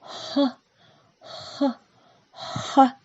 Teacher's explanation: Звук «х». Когда мы его произносим, воздух быстро выходит из горла, не встречая никаких преград. Представьте, что вы дышите на снежинку, чтобы она растаяла.